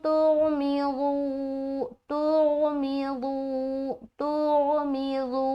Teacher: नून साकिन के बाद ता आ रहा तो यहाँ पर हम इख्फा कर रहे हैं